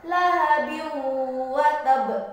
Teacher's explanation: maka huruf wawu harus dibaca melebur dengan huruf sebelumnya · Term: idgham bi gunnah